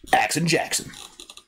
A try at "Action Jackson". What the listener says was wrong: Action, accent. You said accent.